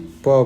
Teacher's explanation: আবার লোয়ার লিপটা যখন নিজের জায়গায় নেমে আসছে, তারপরে প বলতে পারছি। মানে প বলার জন্য লোয়ার লিপ আর আপার লিপ এই দুটো আর্টিকুলেটারের সাহায্য আমরা নিচ্ছি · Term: বাইলেবিয়াল কনসোনেন্ট ফোনিম